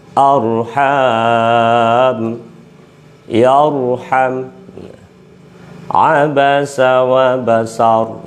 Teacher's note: ro jatuh setelah fathah dibaca tebal · jadi ro yang tebal itu di bibirnya dimanyunkan supaya mendapatkan ketebalan dari sifat ro yang tafkhim